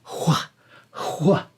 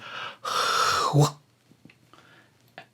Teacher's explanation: the hw of what, the beginning, hwa, should literally be sounded like a wind blowing until it closes in that W sound